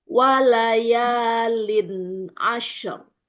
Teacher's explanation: Alirkan syin sukun dulu baru masuk ke ro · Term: shin sukun